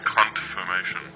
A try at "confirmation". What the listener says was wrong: It sounds like you're saying cunt-formation. Say con. Now say formation. Now say confirmation.